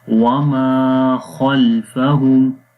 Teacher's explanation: وما خلفہم، خا کو موٹا پڑھیں گے، حروف مستعلیہ میں سے ہے. وما خلفہم، خا کو موٹا پڑھیں گے، لام کو موٹا نہیں پڑھیں گے